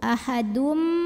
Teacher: ada hukum idgham bighunnah karena ada tanwin lemah bertemu huruf mim maka tanwinnya lebur ke mim masuk